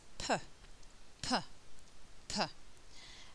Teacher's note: Okay, now when I produce this sound p, I use both my lips and they're tightly together. There is a stopping of the air.